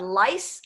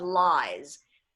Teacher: alargamos el sonido de esa vocal, que es I, y el sonido de S y Z se intercambió. So you have lice and you have lies.